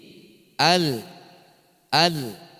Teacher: karena disifatnya tawassuta antara tertahan dan terlepasnya suara, maka bunyinya menjadi al. Sempat mengalir lalu kemudian berhenti.